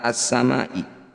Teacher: kata assamai nah ini disebut bacaan mad wajib muttasil cara bacanya Ma yang bertanda layar ini panjangkan enam harakat atau enam ketukan